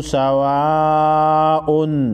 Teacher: واو الف زبر وا کو مد کی وجہ سے 5 سیکنڈ لمبا کریں گے